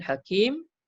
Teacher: Kemudian selepas huruf ya tu, huruf mim tu ada baris 2 di depan, kita pun matikan dia. Asalnya hakimun, tapi kita matikan mim tu, kita sukunkan mim sebab kita nak wakaf di situ. Jadi dalam ma'rif disukun 2 ataupun 4 ataupun 6 harakat.